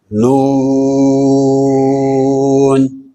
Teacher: یہ زبان کا کنارہ جب اوپر والے دانتوں کے مسوڑوں سے لگے تو اس وقت یہ حرف ادا ہوگا